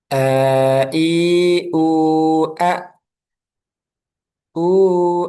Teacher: hamzah keluarnya dari pangkal tenggorokan aqsal halqi. Nah, kemudian ketika sukun jangan sampai ada aliran seperti ain.